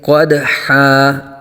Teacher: قدحا، قدحا نہیں کریں گے بلکہ قاف کو پر آ جائے گا، دال ساکن میں قلقلہ کریں گے اور دو زبر کو الف سے بدل دیں گے۔